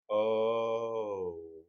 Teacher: And another one that happens in parts of the US is the O, which Americans in general tend to slightly neutralize the first half of the goat diphthong